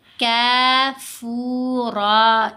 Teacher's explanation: کاف کو بھی لمبا کریں گے، فا کو بھی لمبا کریں گے، را کو بھی لمبا کریں گے، را کو موٹا بھی پڑھیں گے